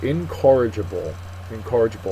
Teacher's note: it's an adjective second syllable is accented